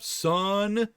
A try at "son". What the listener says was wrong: No, son. You're saying son, S-O-N, but you're hitting the U real hard.